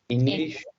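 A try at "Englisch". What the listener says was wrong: इंग्लिश, ई को ए बोलते हैं, इंग्लिश und डुएच।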